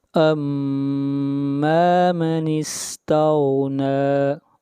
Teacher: غین کو موٹا پڑھیں گے، غین حروف مستعلیہ میں سے ہے